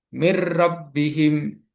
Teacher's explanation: Nun bertemu dengan ro dibaca lebur tanpa mendengung. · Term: idgham bila gunah, idgham bila gunnah